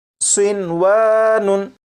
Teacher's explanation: होना तो ये चाहिए था कि नून साकिन को वाव में इदगाम करते, लेकिन नून साकिन और वाव क्योंकि एक लफ्ज़ में इकट्ठे हैं इसलिए यहाँ पर इदगाम नहीं करेंगे और इसे पढ़ेंगे सिनवानुन।